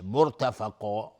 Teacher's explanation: مرتفقا، را ساکنه قبل ضمه اومده حکمش استعلاء میشه. مرتفقا و قاف هم از حروف استعلاء غلیظ تلفظ میشه، الف هم تابع قاف غلیظ تلفظ میشه